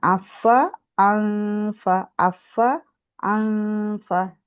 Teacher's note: হামজাটা আলাদা শোনা যাবে, আর নুনের জি গুন্নাটা শোনা যাবে। আপনারটা কি হচ্ছে, হামজাটা ওপেন না হওয়াতে আং এরকম হচ্ছে, আংফাকু না, কমপ্লিট করবেন, তারপরে গুন্নাতে আসবেন।